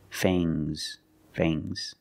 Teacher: plus the nasal sound and a soft G fangs fangs and the S is making a zebra sound Z but it's soft